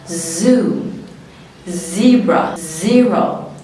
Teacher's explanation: الفوكال كورد بتاعتي بترتعش لان ده voiced، صوت منطوق بجد